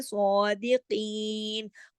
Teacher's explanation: سواد موٹا ہے اور کھڑی زبر کے ساتھ ہے